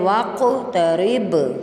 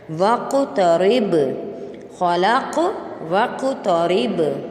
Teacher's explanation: 2 دفعہ قلقلہ کرنا ہے، قاف پر بھی اور با پر بھی